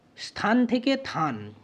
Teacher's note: এখানে দন্তস মানে স্বধ্বনিটা, দন্তস যেটা, এই ব্যঞ্জনটা কি হয়েছে, লোপ পেয়ে গেছে। অর্থাৎ শব্দের একেবারে আদিতে অবস্থিত ব্যঞ্জনের এখানে লোপ ঘটেছে। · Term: আদি ব্যঞ্জনালোপ